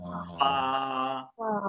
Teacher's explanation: নিচের টোটের পেট উপরের দুই দাত নিচের টোটের পেট উপরে দুই দাত ফা >> ফা বাতাস ফালা